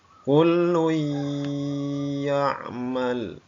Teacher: suara domatennya hilang masuk ke dalam huruf ya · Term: idgham bil gunnah